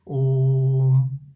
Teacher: ओ को अपन तीन बार बोलना पड़ता है अपनी आवाज तीन बार निकलती है यानी ओम इसीलिए इसको क्या कहते हैं त्रि मात्रिक स्वर भी